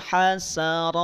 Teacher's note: Yang memercik udaranya atau nafasnya, bukan suaranya. Hati-hati saat kita mengucapkan tak sukun, jangan sampai bunyinya mendekati ataupun serupa dengan bunyi huruf C.